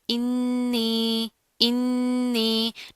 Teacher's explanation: नून के ऊपर तशदीद आ रही है, गुन्ना करेंगे, इस हमजा को नून के साथ मिलाकर पढ़ेंगे।